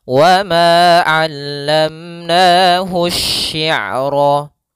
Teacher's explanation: alif lam yang dia ditulis tapi dia tidak terbaca sehingga langsung ditasydidkan ke huruf setelahnya, yaitu pada huruf shinnya ditasydidkan. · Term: Alif lam syamsiyah